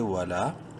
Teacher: واو زبر وا، لام الف زبر لا، الف مدہ ہے، لام کو ایک الف برابر لمبا کریں گے